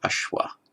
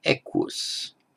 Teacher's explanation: where you have the sh sound in Sanskrit, this is cognate with words in Greek, Latin, and in the Germanic languages with a k sound